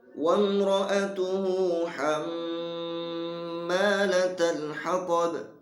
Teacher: hatab di sana juga sama, ada qalqalah kubra, harus dipantulkan.